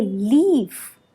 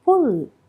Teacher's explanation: the le in leaf is produced in the front part